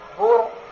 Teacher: قاعدے کے لحاظ سے اس را کو پر کریں گے، بر کہیں گے پہلی دفعہ، پھر جب را زیر ری کہیں گے پھر وہ پہلا قاعدہ ختم ہو گیا، اب را کے اوپر اپنی زیر آ گئی ہے، اس لیے اس را کو کیا کریں گے؟